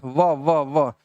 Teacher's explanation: दांत और ओट दोनों मिल जा रहे हैं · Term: दं तोष